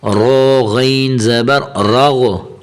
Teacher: را بھی موٹا ہے اور غین کو بھی موٹا کرنا ہے۔ را غین زبر راغو، یا را زبر غین راگ، یہ دو طرح کے پڑھے جاتے، جیسے آپ کو آسانی لگے پڑھنے میں تو ویسے پڑھے۔